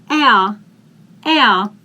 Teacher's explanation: if we have r in the end, in the German language, we vocalize it.